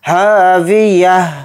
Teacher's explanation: हाविया हा के साथ अलिफ मद्दा है तो हा अलिफ ज़बर हा को थोड़ा खींचेंगे, फिर ता को यहाँ पर हाय साकिन करके पढ़ेंगे, क्योंकि यहाँ पर आयत हो रही हालत वक्फ़ में ता को हा बनाकर पढ़ेंगे